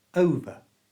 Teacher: The ER is just pronounced with that little schwa sound that's so common in English. It sounds like this.